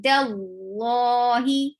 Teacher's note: Dal will be light and lafz jalala will be heavy, because whenever you will find fatha or dhamma before Allah subhanahu wa ta'ala's name, you will make Allah subhanahu wa ta'ala's name heavy.